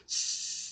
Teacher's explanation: 스는 막는 게 아니라 통로를 엄청 좁혀서 내는 소리예요.